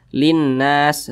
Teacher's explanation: Jadi huruf lamnya ini dia tidak dibaca, langsung masuk di huruf di depannya ini. Nah, ini huruf lam yang ini tidak dibaca, langsung masuk ke huruf nun. Linnas seperti itu. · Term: Idgham Syamsiyah, idgham syamsiyah